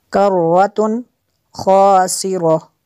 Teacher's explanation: تنوین کے بعد خوا ہے حروف حلقیہ میں سے، تو یہاں پہ اظہار ہوگا، غنہ نہیں کریں گے۔